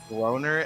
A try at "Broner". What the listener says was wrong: No, stop. I pronounce the R very aggressively with that name for a reason.